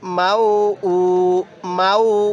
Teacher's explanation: এই হামজা এর মধ্যে আমরা এক আলিফ টান দিব